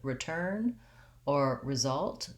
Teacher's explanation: when an re is unstressed at the beginning of word like in return or result then we would have the lax vowel